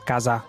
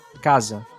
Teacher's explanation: Não falamos casar, nós falamos casa. Perceba que a última sílaba sofre de vowel reduction, ela meio que desaparece no final.